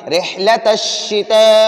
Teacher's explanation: را کے نیچے زیر ہے تو ہم را کو باریک پڑھیں گے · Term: را کو باریک پڑھنا